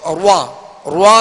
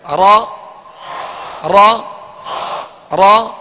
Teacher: اور دوسرا ہے کہ را پر جیسے زبر ہے تو اس کو روا روا نہیں پڑھیں گے ہونٹوں کو گول کر کے نہیں پڑھیں گے بلکہ ہونٹ بالکل نارمل رہیں گول نہ ہو. زبر کی ادائیگی میں صرف آواز اور منہ کھلے اور را پر پڑھا جائے.